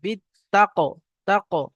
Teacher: أو أمر بالتقوى، বা তাজের বিত, তা কফ জবর তাক। এখানে কলকলার কফ এসছে, কফের উপর সাকিন আছে, কলকলা হবে